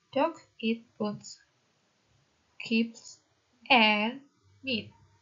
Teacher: all but the last one have a rising tone. The last item in the list will, however, require falling intonation. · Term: listing